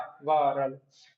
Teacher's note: ईशत स्पृष्ट, जिसपे छू रही है लेकिन हल्की सी